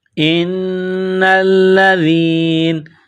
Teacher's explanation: جب وقف کریں گے اسٹاپ کریں گے تو نون کو سائلنٹ کریں گے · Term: وقفاً